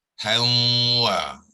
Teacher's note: So apa maksud digugurkan? Ialah ha yang bertanwin akan kita terus sambung kepada waw